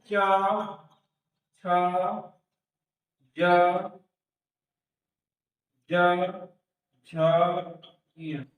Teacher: वे व्यंजन जो हमारे जीभ के मध्य भाग से मध्य भाग से बोले जाते हैं उसे तालव्य व्यंजन कहते हैं